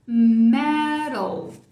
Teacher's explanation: esse T com um símbolozinho embaixo quer dizer que virou o R de caro. Schwa, L marcando.